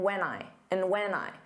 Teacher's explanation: And just becomes n. And when just becomes an unstressed when when. So you just don't open your mouth as much.